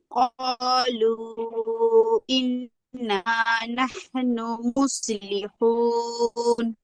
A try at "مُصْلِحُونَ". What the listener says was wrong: মুস বলা যাবে না, একটু খেয়াল করুন। মুসলিহুন, মুখটা একটু গোল করে মুস। মুস